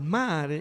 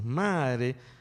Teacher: Tenemos un tono alto, el mare, y casi siempre nosotros entonamos eso, mare, y no tenemos una D.